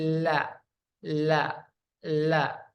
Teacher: ujung dua tepi lidah sampai pada akhir ujung lidah menempel pada gusi dari gigi-gigi bagian atas yang berhadapan pada dua gigi geraham pertama, dua gigi taring, dua gigi seri samping, dan dua gigi seri, yaitu huruf la, lam.